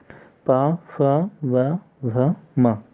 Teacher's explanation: इन सभी वर्णों का उच्चारण स्थान ओष्ठ होता है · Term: ओष्ठ वर्ण